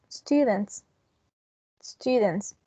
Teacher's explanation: And the same happens in the case of students. The T, the T is voiceless, so the S is going to be pronounced voiceless as well.